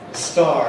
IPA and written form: stɑːr (star)